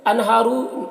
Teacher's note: انہارو کے نون میں اظہار ہو رہا ہے، اسے جلد پڑھنا ہے · ہا میں کھڑا زبر ہے، ایک الف کے برابر اسے کھینچیں گے